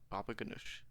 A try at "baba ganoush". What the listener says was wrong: You gotta put a bit of stink on that last syllable. Baba ganoush. Baba ganoush.